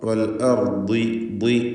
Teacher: ദ്വാദിനും തഫ്ഖീം. എന്നാൽ ദ്വാദിന് കസ്റ ആയതുകൊണ്ട് കുറഞ്ഞ തഫ്ഖീമാണ്.